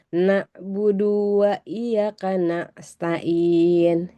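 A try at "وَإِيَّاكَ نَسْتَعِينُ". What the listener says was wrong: Panjang ianya. Wa iyyaka panjang. Lagi ain. Nasta'in. Wa iyyaka nasta'in.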